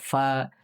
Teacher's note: Ini keluarnya di bibir bagian bawah bertemu ujung gigi seri atas